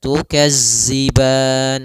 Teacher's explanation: Maka latihannya agar tidak terbaca dengan huruf zai, itu ujung lidah kita menempel dengan gigi seri atas sehingga terdengar dengan sempurna untuk makhraj daripada makhraj huruf zal